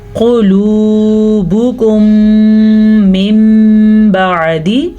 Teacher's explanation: मीम साकिन के बाद दोबारा मीम आने की वजह से हमने यहाँ पे गुन्ना किया है, क्योंकि यहाँ पे इदगाम शफ़वी का कायदा हो रहा है।